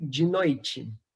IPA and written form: "d͡ʒ e noit͡ʃe" (de noite)